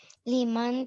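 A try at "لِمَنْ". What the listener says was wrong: अब मन नहीं आया, अब मन नहीं आया, लीमन आ गया.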